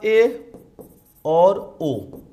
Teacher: ए और ओ के उच्चारण में मुख आधा बंद सा रहता है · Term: अर्ध समृत स्वर